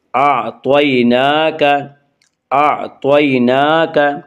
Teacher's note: یالین وہ یا جو ساکن ہو اور اس سے پہلے زبر ہو، یعنی ان کو نرم آواز کے ساتھ جلدی پڑھیں گے